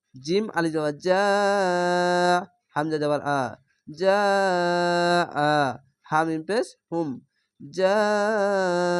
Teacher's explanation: মাদ্দে লাজিম চার আলিফ টেনে পড়তে হবে